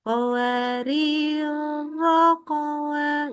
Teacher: cara baca tadi qwarironya yang pertama dibaca pendek